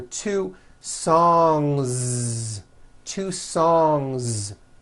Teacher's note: song ends with a voiced n sound so if you make it plural don't forget to add a voiced Z ending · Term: voiced NG sound